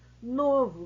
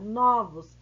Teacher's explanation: novo fechado no singular novos aberto no plural